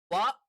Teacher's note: മുൻപല്ലിന്റെ അറ്റം താഴെ ചുണ്ടിന്റെ പള്ള ഭാഗത്ത് വെച്ചുകൊണ്ടാണ് ഫ